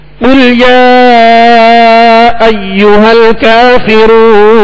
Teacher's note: یہ قل جو ہے موٹے قاف کے ساتھ ہے، یعنی دو نقطے والا قاف، جیسا کہ ہم نے مشق میں مدنی قاعدے میں پڑھا کہ قاف کو پر یعنی موٹا پڑھیں گے کیونکہ حروف مستعلیہ میں سے ہے.